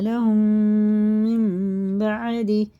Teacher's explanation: میم ساکن کے بعد میم ہے تو یہ ادغام شفیع ہے، غنہ کر کے اسے بھی پڑھا جاتا ہے